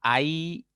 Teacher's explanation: núcleo silábico estás situada en primera posición ya es decir estos empiezan con una vocal abierta y terminan con una vocal cerrada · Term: diptongo de tipo decreciente